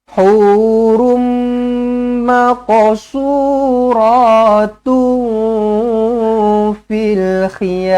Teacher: Asalnya macam tu. Tetapi disebabkan selepasnya datang huruf mim sabdu, terus rapat bibir, daripada hurul menjadi hurum. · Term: idgham ma'al gunnah